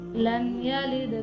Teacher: لم یلد، میم ساکن کے بعد یا ہے، تو میم ساکن کے بعد یا آئے تو وہ اظہار شفوی ہوگا